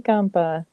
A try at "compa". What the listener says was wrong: Entonces, mi amiga dijo, ¿qué tal mi compa? Recuerda que es con O. It's with an O. Compa. compa. Mi amiga dijo, ¿qué tal mi compa?